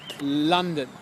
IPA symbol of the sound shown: ʌ